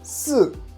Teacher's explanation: So it's a drop down tone. It's the fourth tone.